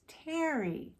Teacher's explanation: To make the T sound, we put our tongue on the roof of our mouth near the front of our mouth.